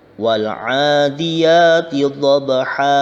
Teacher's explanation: pada lafadz dhabha terdapat bacaan mad iwad, harokat fathatain dibaca panjang satu alif karena waqaf